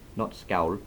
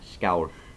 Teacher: it's more like a softer L that's had some kind of air blown through it afterwards